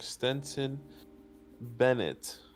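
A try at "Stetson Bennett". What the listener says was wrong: It's Stetson, by the way. Stet instead of Stent. Stetson.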